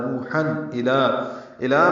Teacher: نوحن الا میں لام باریک 2 حرکات لمبا کریں گے۔